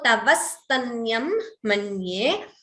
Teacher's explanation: Here Dvitvam, extra s is heard, the s is doubling.